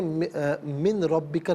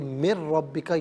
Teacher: میم کے بعد نون کی آواز نہیں بلکہ را کی آواز آئے گی